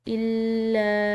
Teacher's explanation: مشدد لام، اس کے بعد الف مدہ پر جو ہے یہ چھوٹی مد ہے تو اس کو لمبا ادا کریں گے